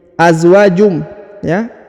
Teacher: Huruf tanwin harokat un bertemu dengan mim, maka ditahan, ditekan, dileburkan, huruf unnya berubah menjadi mim